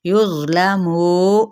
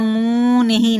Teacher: तफ़ख़ीम भी कहते हैं अरबिक में। युज़लमू, मुँह कहना, मुँह नहीं, नाक में से आवाज़ नहीं निकालनी, हरूफे मद्दा है